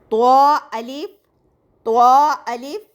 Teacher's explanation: زبان کی نوک جب ثنایا علیہ کی جڑ سے لگے تو یہ حروف ادا ہوتا ہے